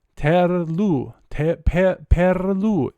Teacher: It's rolled R. So here we're not just doing a flap.